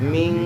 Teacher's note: Ming itu ikhfa. Harus dengung sambil ditahan.